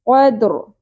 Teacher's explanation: قد قلقلہ کی ساؤنڈ بھی آئے گی، اور رو ساکن ہوتے ہوئے پر بھی ہوگا